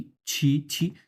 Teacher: ছি যখন বলছে তখন অনেক পরিমাণে বাতাস বেরো যাচ্ছে